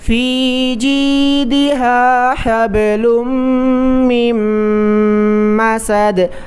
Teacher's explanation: میم کو میم کے ساتھ ملائیں گے، بیچ میں جو نون ساکن ہے وہ نہیں پڑھیں گے۔